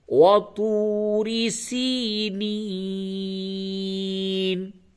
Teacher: توری غلط ہوگا، منہ بھر کے آواز نکالیں، پڑھ کر کے پڑھیں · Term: موٹی آواز